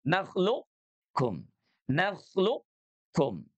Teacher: Huruf qof-nya punya sifat istila, maka dia tidak lebur 100%. Tidak naklukkum, tapi qof-nya dia menebal dulu. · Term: idgham mutaqoribain